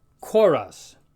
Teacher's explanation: sounds more like a k with an H sound after an aspirated k